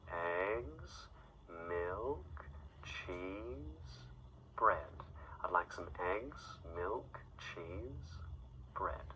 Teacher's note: we would use a downward inflection, bread, to say that we finished the list. But on the items before that, we would use a rising inflection.